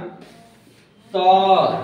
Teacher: त तो बोलिए तो दांत में जीभ सट रहा है